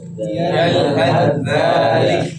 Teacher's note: Huruf yang pertama ta maksudnya dimasukkan kepada huruf yang kedua dzal. Maka tidak boleh lagi dibaca yalhadzalika, tapi yalhadzalik. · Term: idgham mutajalisain